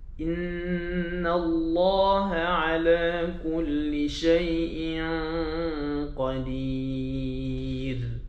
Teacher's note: Ikhfa dengan qaf gitu tak terus bawa sampingnya. Betul ra qadir nipis